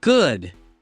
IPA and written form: ɡʊd (good)